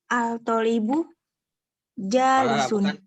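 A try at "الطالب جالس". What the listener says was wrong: Bukan al-tolibu, alif lam syamsiyah.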